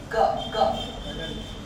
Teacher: अपन तो ग बोलते हैं, जो वेलम से बोला जाता है, ग ग, ग नहीं बोलते अपन।